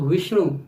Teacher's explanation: विष्णु वी पे हम ज्यादा फोकस करें तो वी वलाघात हो जाएगा